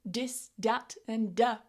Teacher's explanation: you've been saying dis, dat, and da, and you've not been using the th sound